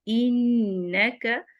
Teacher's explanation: انکا، نون مشدد ہے، غنہ ہوگا اور غنہ کامل ہوگا. انکا کیدہن، اس کو کا دیہن بھی نہیں پڑھنا.